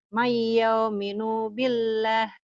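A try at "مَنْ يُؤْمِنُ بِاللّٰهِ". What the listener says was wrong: Mayu. Mayu. Ditekan. Ada hamzahnya ditekan. Mayu minu billah. Kayak ditekan gitu ya. ada hamzahnya. Mayu. Mayu minu billah.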